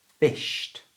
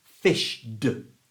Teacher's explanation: it's voiceless sh so we follow our rules and we use our voiceless ending the T sound